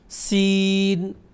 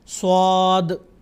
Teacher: سین کی آواز سخت اور باریک ہے اور صاد کی آواز پر ہے یعنی گول. آپ اسکرین پہ دیکھ سکتے ہیں جب میں صاد کی آواز نکالتا ہوں تو میرے ہونٹ گول ہوتے ہیں تاکہ اس کی آواز گول ہو جائے۔